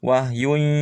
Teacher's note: Wahyun, setiap tanwin menghadapi ya maka tekan, dengungkan, hilangkan tanwinnya. Wahyun tekan dan dengungkan, artinya suara masuk ke pangkal hidung.